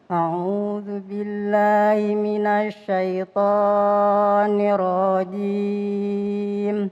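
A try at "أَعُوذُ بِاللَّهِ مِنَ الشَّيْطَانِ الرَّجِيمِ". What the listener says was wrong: Itu yang saya maksud kepanjangan. Syaitani. Kepanjangan Bunda. Tani. Jangan tani.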